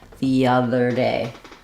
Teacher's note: day gets stressed here, so all of these three syllables are going to be quicker.